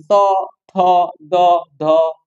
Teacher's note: এগুলো দন্ত থেকে বা দাঁত থেকে উচ্চারিত হয়, সেজন্য এগুলোকে দন্ত ন ধ্বনি বলা হয়, দন্ত ধ্বনি বলা হয় এবং একই সাথে এই ন কে দন্ত ন বলা হয়।